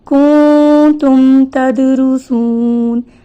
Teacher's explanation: جب ہم اظہار کرتے ہیں تو لمبا نہیں کرتے آواز کو، بلکہ اس کو جلدی سے ادا کرتے ہیں میم کو ظاہر کرتے ہوئے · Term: اظہار شفوی